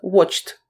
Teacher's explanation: вимовляється як Т після глухих приголосних крім літери Т